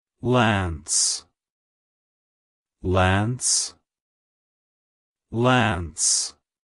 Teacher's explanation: Ages it's pronounced as Lance Lance Lance to pronounce it correctly emphasize the l sound at the beginning and pronounce the a as in ant then the n and S sounds follow smoothly like hello Lance